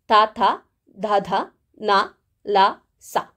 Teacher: ಧ ನ ಲ ಸ ಈ ಅಕ್ಷರಗಳನ್ನ ನಾವು ಹೇಳುವಾಗ ಹಲ್ಲಿನ ಸಹಾಯವನ್ನು ಪಡೆದುಕೊಳ್ಳುತ್ತೇವೆ ಅಂದ್ರೆ ಇವುಗಳು ಹಲ್ಲುಗಳ ಸಹಾಯದಿಂದ ಹುಟ್ಟುತ್ತವೆ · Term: ದಂತ್ಯ ವರ್ಣಗಳು